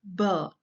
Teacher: So, burr, we can hear there is a lot of voice coming out. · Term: voiced sound